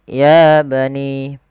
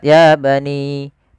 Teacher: terdapat mad thabi'i pada 'ya', ditandai dengan ' ya' bertemu dengan alif kecil setelahnya, sehingga 'ya' harus dipanjangkan dengan dua harakat.